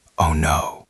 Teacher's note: It has to go down in pitch. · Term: intonation